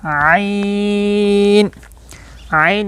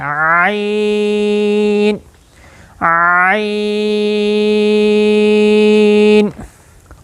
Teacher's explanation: तो ऐन कहां से अदा होता है? ऐन। यह वस्त हलक से अदा होता है।